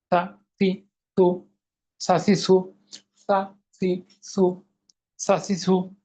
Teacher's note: জিহ্বার আগাটা উপরের দাঁতের আগার সঙ্গে হালকা করে লাগিয়ে। এরপরে এটা পাতলা ও নরম, সা সি সু, সা সি সু, সা সি সু, সা সি সু।